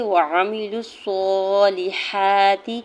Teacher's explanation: وعاملوا الصالحات، لام کی زیر کو بغیر کھینچے ہوئے ادا کرنا ہے۔ ہا کے اوپر کھڑی زبر دو حرکت کھینچ کے ادا کریں گے · لام کی پیش کو صاد مشدد کے ساتھ ملاتے ہوئے پڑھیں گے۔